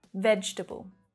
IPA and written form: 'vedʒ təbl (Vegetable)